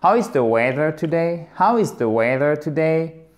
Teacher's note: Pourquoi? Puisqu'il y a un mot interrogatif au début et on descend sur la fin. How, faites bien le H et ici c'est une diphtongue comme dans now, c'est exactement la même. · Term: intonation descendante